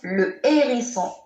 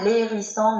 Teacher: Le H aspiré, je ne peux pas faire ni la liaison, ni l'élision. Et je trouve toujours devant le H ces 2 articles, le et la.